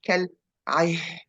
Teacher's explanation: So here, the al-ihn, the word al-ihn, and you have to be cautious when you pronounce al-ihn, because we have ayn and ha, and they are with a near makhraj or near exit. So you have to pronounce the ayn first, and then go for the ha, which is actually an air coming from inside